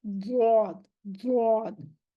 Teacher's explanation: इस्तिला है, कवी सिफत है ये, इसको मोटा पढ़ा जाएगा, इसकी अदायगी मोटी होगी।